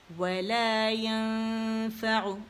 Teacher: اخفاء، نون چھپائیں گے